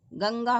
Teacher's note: अनुस्वार जो है स्वर के बाद आता है और नाक से इसकी ध्वनि निकलती है